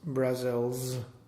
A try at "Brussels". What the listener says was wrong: So I want you to think about the and the L before you get to the Z. You're fixating on the Z and then you're really fucking up.